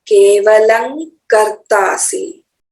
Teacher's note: यहाँ केवलम के बाद क का उच्चारण है, इसीलिए आधा म के बदले में आधा न आएगा। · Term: अनुस्वार